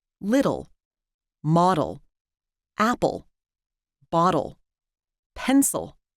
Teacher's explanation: there's a special reduced vowel that only occurs before L we call it teal towels you can hear it in words